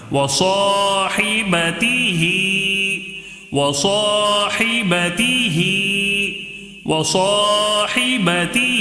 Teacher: ہی میں کھڑی زیر ہونے کی وجہ سے ایک الف کے برابر یہاں پر کھینچ کر پڑھیں گے